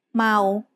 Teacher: ma is said with a midtone